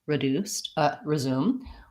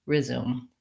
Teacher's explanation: they have a reduced vowel, which can either sound like the schwa, reduced, resume, or the I, resume.